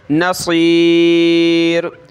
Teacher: ٹھیک ہے، صاد نکالنا ہے، نصیر، اس کی جگہ سین نہیں پڑھیں گے، نصیر نہیں بلکہ موٹا کر کے نصیر